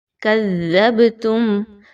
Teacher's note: کذبتم، با کے اوپر جزم کی علامت ہے تو با کو تھوڑا سا ہلا کے پڑھیے قلقلہ کرتے ہوئے